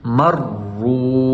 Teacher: تو ہم نے پڑھنا ہے میم را زبر مر، را واو پیش رو، مر رو۔ را کو خوب موٹا کر کے پڑھیں گے کیونکہ را کے اوپر پیش ہے، جب بھی را کے اوپر غمہ آ جائے یعنی پیش آ جائے تو ہم نے اس کو خوب موٹا کر کے پڑھنا ہے، پر کر کے۔